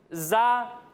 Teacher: جب ہم اس کی ادائیگی کریں گے تو اس میں سیٹی کی آواز آئے گی اور اسے بھی ہم باریک پڑھیں گے